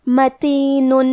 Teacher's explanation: کلمت متین میں آخری میں نون پہ تنوین پیش ہے، اگر ہم یہ آیت کو اگلی آیت کے ساتھ ملا کے پڑھے تو حرف الالف کلمت حروف الابہار میں سے ہے، تو ہم تنوین کو ظاہر کرتے ہوئے اور بغیر غنہ سے یہ حکمے کو ادا کریں گے